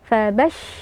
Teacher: yang menonjol adalah sifat tafasyi ya Hamas dan juga tafasyi jadi dia ee mengeluarkan nafas dan juga ada ee semburan angin ya dari makhraj huruf syin dari tengah lidah sampai ke keluar ya sampai ke gigi kita fabas ya jadi